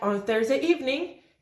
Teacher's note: if the adverbial is in the initial position, like on Thursday evening, it has a separate IP